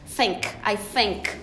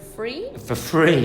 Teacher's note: I mean the unvoiced one becomes an f